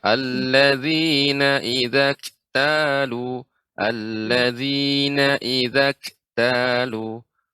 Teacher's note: kaf yang sukun. Ini sifatnya hamas. Adanya aliran udara. Terbukanya pita suara.